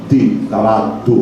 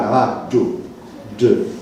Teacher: è una semplice D raddoppiata, ma nella maggior parte dei casi si tratta di una D cerebrale, cacuminale, quindi con la punta della lingua sul palato si pronuncia